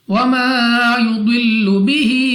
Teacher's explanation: وَمَا الف سے پہلے زبر الف مدہ کھینچ کر پڑھیں گے، ضاد مستعلیہ میں سے ہے، موٹا پڑھیں گے، منہ اور آواز کو کھول کر۔ ہا کے نیچے کھڑی زیر ہے، اور اس کے اوپر ہمارے پاس مد ہے، تو ہم 2 نہیں بلکہ 3، 4 یا 5 سیکنڈ تک کھینچ کر پڑھیں گے۔ · سین سیٹی والی آواز کے ساتھ پڑھی جائے گی۔ قاف مستعلیہ میں سے ہے، موٹا پڑھیں گے، منہ اور آواز کو کھول کر۔